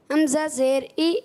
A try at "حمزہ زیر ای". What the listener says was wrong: جلدی نہیں، حمزہ زیر ای،